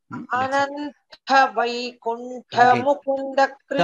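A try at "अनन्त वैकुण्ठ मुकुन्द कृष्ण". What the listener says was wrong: Tha is not tha again. Tha I could hear as Mahaprana. It is not Ananta.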